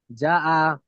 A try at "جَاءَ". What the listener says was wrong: না, যাতে টানেন।